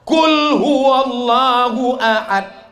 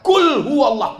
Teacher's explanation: itu pakai qaf, qalqalah di dalam